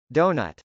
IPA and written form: dˈoʊn.ʌt (doughnut)